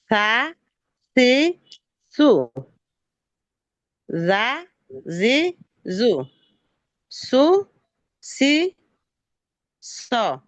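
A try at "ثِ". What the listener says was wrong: খেয়াল করেন, সৎ কাসরা সি বলা যাবে না, সিন কাসরা হয় সি, সৎ কাসরা হবে সি। একটু মোটা করে মুখটা একটু গোল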